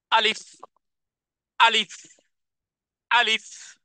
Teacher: উচ্চারণে আওয়াজকে কঠিন করেছি, ধাক্কা দিয়ে উচ্চারণ করেছি, কোন রকমের টানবিহীন উচ্চারণ করেছি।